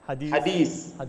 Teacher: فتلقائيا انت تسمع ان السوداني لا يخرج ذلك الثاء، فهو يكتفي بالسين فحسب